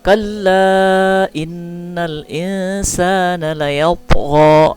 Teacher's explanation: Inna gunnah ya, dengung dua harakat.